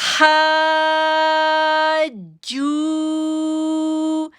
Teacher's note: جیم کے اوپر تشدید ہے، اس میں شدت بھی ظاہر کریں گے